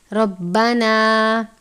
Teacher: را کے اوپر زبر ہے، را کو پر پڑھیں گے